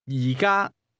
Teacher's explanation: That's a mid-falling, high-level combination.